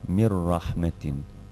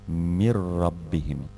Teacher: Dalje, ovdje piše min rabbihim, a mi čitamo kao da piše mir rabbihim. Dakle, u svakom slučaju se gubi harf nun sa sukunom, a sljedeći harf, to je harf ra, se udvostručava sa teštidom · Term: uklapanja bez izgovora kroz nos